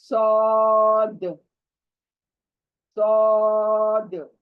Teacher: सामने के पूरे दांतों का ढांचा है, वहां पर हमारे जबान का किनारा टच करेगा